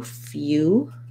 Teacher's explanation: But in few, it has that glide and it sounds like a U, few. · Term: y glide